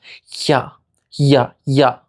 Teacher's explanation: it's pretty similar to the English ya, but even more restricted in the mouth. Your tongue comes very close to touching the roof of your mouth. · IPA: ʝ